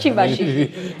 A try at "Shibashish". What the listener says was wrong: Don't say the G.